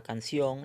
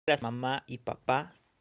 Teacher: son palabras agudas porque llevan la mayor fuerza de voz en la última sílaba